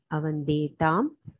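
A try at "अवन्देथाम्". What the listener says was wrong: The madhyama purusha dvivachana will be avande tham mahaprana. Avande tham. it is, if you say avande tham, it will become it dvivachana.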